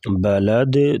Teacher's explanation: دال ساکن ہوگی تو یہاں پر قلقلہ کریں گے۔